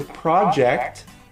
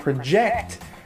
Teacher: the project the stress is on the first syllable and project the verb it's on the second syllable